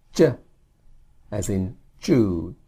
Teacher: the J sound it's not jut to Juck it's jut toju the sound seems to come from the front of your mouth not the back of your throat